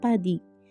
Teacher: Berikut contoh penggunaannya dalam kata huruf P yang kita ambil. Huruf P pada awal kata seperti padi, cara pengucapannya dengan huruf P dihembuskan.